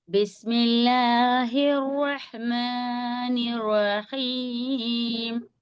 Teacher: یہ بڑا ہا ہے اور یہ حلق کے درمیانی حصے سے نکلتا ہے